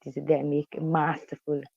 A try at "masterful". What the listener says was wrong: Like it almost sounds like we're saying ma. Master versus master.